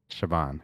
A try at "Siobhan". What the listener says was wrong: No B, a V. V for very. Yeah, so the B is replaced with a V.